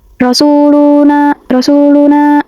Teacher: Dia itu dibaca panjang 2 harokat pada huruf na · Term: mat tabi'i